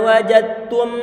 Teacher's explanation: Huruf dal itu kalau misalnya dia dalam kondisi sukun mestinya dia punya sifat qalqalah. Tetapi di sini telah didhamkan secara sempurna sehingga sifat qalqalahnya pun menjadi hilang. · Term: idgham kamil